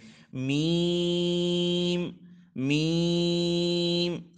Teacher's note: اس کو دونوں ہونٹوں کے جو خشک حصے ہیں وہ آپس میں ملیں گے، اوپر اور نیچے والے جو ہونٹوں کے خشک حصے ہیں وہ آپس میں ملیں گے